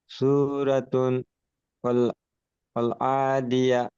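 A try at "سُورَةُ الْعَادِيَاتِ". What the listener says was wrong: আদিয়াত সূরাতুল, এই তার উপরে যে পেশটা আছে, ওই পেশটা লামের সঙ্গে যুক্ত হবে, তা লাম পেশ তুল। সূরাতুল আদিয়াত।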